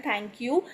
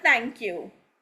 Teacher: बट अगर इसे को कोई अंग्रेज बोल रहा होगा तो अंग्रेज बोलेगा थैंक यू. He or she will not be pronouncing the sound of H in between the thank.